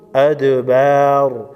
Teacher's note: وَإِن يُقَاتِلُوكُمْ يُوَلُّوكُمُ الْأَدْبَارَ، ادبار، دال ساکن کو ہلا کر پڑھیں گے۔ دال حروف قلقلہ میں سے ہے، 5 حروف قلقلہ، جس پر جزم ہو حروف قلقلہ، یہاں پر قلقلہ ہوگا، یعنی اس کو ہلا کر پڑھیں گے۔